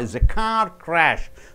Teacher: So car should be stressed more. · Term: Two word stress